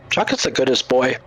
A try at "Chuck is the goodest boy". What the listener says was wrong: Why are you putting so much emphasis upon the H? It's called putting the emphasis upon the wrong syllable.